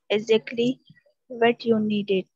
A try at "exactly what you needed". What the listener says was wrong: Okay, you can speak better. Keep it up, dear student.